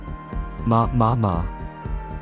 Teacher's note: 미음 소리. 입술을 다물고 나는 소리. 마. 입술이 닫혔다 열리는 것이 느껴지나요? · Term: 순음